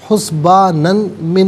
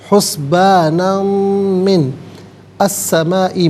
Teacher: حسبانم میں نون پر 2 زبر کی تنوین، اسے من کی میم کے ساتھ ملائیں گے، میم کی آواز کو غنّے کے ساتھ ادا کریں گے